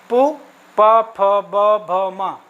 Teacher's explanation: उ कहते समय देखिए हमारा मुंह गोल हो गया ना, ओठ का काम हो रहा है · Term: ओष्ठ